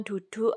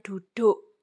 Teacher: U yang terakhir itu diucapkan kayak bunyi O, padahal tulisannya simbolnya nanti tidak O ya, tapi U besar, U kapital. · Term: alofon